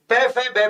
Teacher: पै, फै, बै, भै में इन सबका उच्चारण कहां से होता है, होठ से, इसलिए इनको ओष्ठ्य कहते हैं।